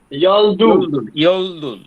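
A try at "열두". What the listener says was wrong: দুল হবে না। কিন্তু ওকে ব্যবহার করার সময় দু ব্যবহার করতে হবে। ইয়ল থাকবে না। তাহলে ইয়ল দু।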